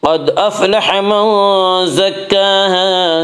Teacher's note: قاف کو پر پڑھیں گے، قاف حروف مستعلیہ میں سے ہے۔